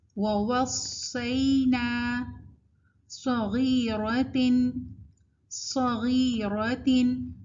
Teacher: آپ نے فیل کیا کہ صاد کے اوپر بھی ایک وسلنگ ساؤنڈ ہے